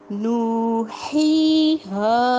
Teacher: پہلے واؤ مدہ آ رہا ہے، پھر یا مدہ آ رہا ہے اور پھر الف مدہ آ رہا ہے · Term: تینوں مدہ